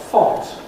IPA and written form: fɒnt (font)